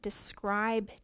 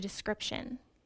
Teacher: the long i changed to a short i